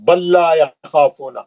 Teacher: لام ساکن کا لام مشدد میں ادغام متماثل ہوگا. ساکن والے لام کو نہیں پڑھیں گے، تجدید والے لام سے پڑھیں گے.